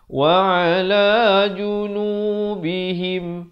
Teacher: sempurnakan bunyi mim mati tanpa dipanjangkan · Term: izhar syafawi